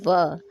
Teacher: जब भी आप व का उच्चारण करेंगे तो आपका दंत और ओष्ठ दोनों का ही प्रयोग उसमें होता है। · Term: दंतोष्ठ